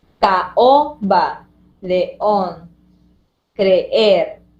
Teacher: Ahí estaban queriéndose juntar dos vocales abiertas, pero esto en realidad genera separación, a lo cual llamaremos hiato simple.